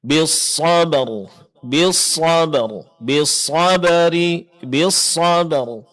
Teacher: huruf yang diqalqalakan di sini hanya ada satu huruf, yaitu huruf ba ketika sukun